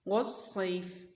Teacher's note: والصیف میں واو پر منہ کو گول کر لیں گے، صاد کی آواز سیٹی والی اور موٹی ہوگی۔